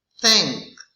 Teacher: It's dental and fricative.